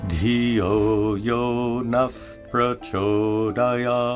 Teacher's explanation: When a visarga is followed by a pa or pa, it's pronounced as an F sound.